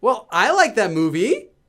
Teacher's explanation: So it's kind of like in English, ending a sentence with a question mark or with a rising intonation. So you're making a statement, but you're ending your statement with a rising intonation, as if it's a question. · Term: up speak, upspeak